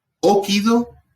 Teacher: Fíjense que acá yo cambié el acento de posición porque es una palabra de 3 sílabas. Cuando la vocal es breve, esa I es breve, el acento cae en la sílaba anterior.